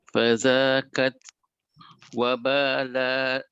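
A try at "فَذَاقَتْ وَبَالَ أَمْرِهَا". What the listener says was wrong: Fazaqat boleh, kalau boleh bunyikan huruf qaf. Fazakat tu macam huruf kaf. Bunyikan qaf.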